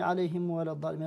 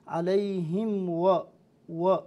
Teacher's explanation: كثيرا ما نسمع أنعمت عليهم غير المغضوب عليهم ولا الضالين، عليهم ولا الضالين، هذه ما هي عليهم ولا الضالين، صحيح عليهم و لا بد نفتح شوي عن الفاء عن الواو حتى يكون صحيحا، حتى لا يلتبس بالميم، حتى لا يكون ميما، فالميم بالإطباق والواو بالانفتاح، فرشة خفيفة بين الشفتين خلاص يأتي مخرج الواو. وإذا لم تأتي هذه الصفة وهذه الطريقة لا نتمكن منها، فإن الميم الواو ستتحول إلى ميم، عليهم ولا، عليهم ولا الضالين، عليهم و لا بد ضم الشفتين قدام.